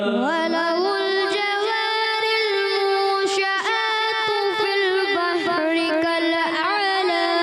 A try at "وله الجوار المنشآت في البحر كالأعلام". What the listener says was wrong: غنّے کی ادائیگی تھوڑا اور کریں گے اچھے انداز سے. وَلَهُ الْجَوَارِ الْمُنشَآتُ فِي الْبَحْرِ كَالْأَعْلَامِ.